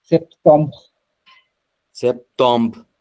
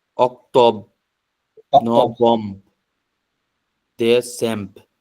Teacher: বি দিবে কিন্তু একটু গলা থেকে ধাক্কা আসবে একটা